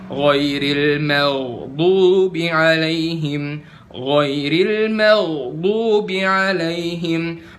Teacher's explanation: makhraj kalian udah bener huruf ghain, yaitu di tenggorokan atas